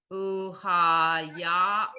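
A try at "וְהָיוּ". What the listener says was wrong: It's the same meaning, but it's not ooh. ahayu.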